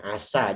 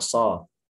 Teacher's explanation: Arabiah kan a, bukan o. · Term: fathah